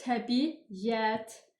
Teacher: Təbiət sözündə də ortaya y hərfi artırılır.